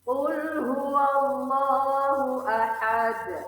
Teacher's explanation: Kata ahad mempunyai huruf dal yang sebenarnya mempunyai harkat hidup. Namun karena waqaf, maka dal dimatikan atau disukunkan dengan pantulan besar.